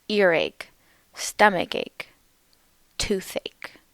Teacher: Notice that in these words the stress is on the first syllable.